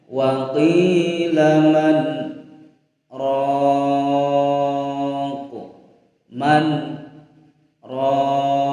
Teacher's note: Selanjutnya pada surah Al-Qiyamah ayat 27 pada kalimat man raqin. Nah, kita berhenti pada lafadz man, berhenti tidak bernapas sekiranya 2 harokat dan dilanjutkan pada huruf ra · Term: saktah